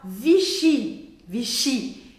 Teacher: A última sílaba é a que é a mais forte, a mais que a gente escuta mais forte.